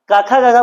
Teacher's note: क ख ग घ यह सारे अक्षर का उच्चारण कंठ से होता है